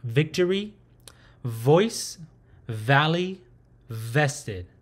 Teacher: it has a buzzing sound with a lowered lip touching the top teeth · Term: english sound v